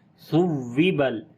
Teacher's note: واو کے اوپر نبر کریں گے، وہی آواز کو اونچا کر کے پڑھیں گے